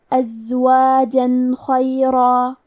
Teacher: ہم یہاں تنوین ظاہر کریں گے اور اسے نون ساکن پڑھیں گے اور بغیر غنہ سے یہ حکم کو ادا کریں گے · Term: اظہار